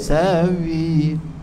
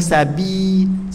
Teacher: Ba nipis, ba lembut, ba huruf bibir. Sawi. Bukan sabi, tak mau.